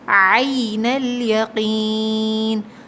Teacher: عین حلق سے ادا ہوگا، حلقیہ لیٹر ہے، عین الیقین، قوف کو موٹا پڑھیں گے، اور یا ساکن سے پہلے زیر ہے یہاں قوف پہ، تو یہ یا مدہ ہے، کھینچ کے پڑھیں گے۔